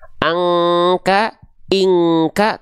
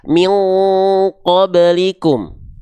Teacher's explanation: Misalnya ada nun sukun atau tanwin berjumpa dengan qaf dan kaf, baru dia menyerupai dengungan kekuatan eng. Bedanya kalau ketemunya sama kaf, engnya eng tipis, angka, ingka. Kalau ketemu dengan huruf qaf, engnya tebal. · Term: dengungan eng